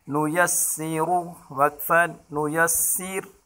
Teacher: اس را کو وقف کی حالت میں باریک پڑھیں گے